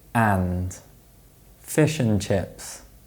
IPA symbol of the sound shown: ə